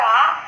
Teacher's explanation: दूसरे स्वर को यदि देखें तो वह स्वर है हमारा आ। यह दीर्घ स्वर है और विवृत पश्च कहलाता है, क्योंकि इसमें जीभ बिल्कुल पीछे रहती है।